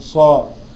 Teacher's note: حرف صفير فيها صفة الصفير بالظبط، يعني صاء لازم يبقى فيها صفارة وانا بنطق صاء